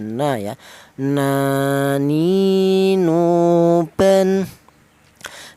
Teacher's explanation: huruf berasal dari ujung lidah menyentuh langit-langit mulut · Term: huruf nun